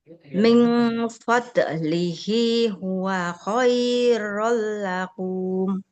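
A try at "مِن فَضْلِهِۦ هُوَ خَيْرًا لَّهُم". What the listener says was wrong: Haknya nggak panjang. Kan huruf berharokat dhammah panjang kalau ada wawu di depannya. Min fadlihi huwa khairul lahum.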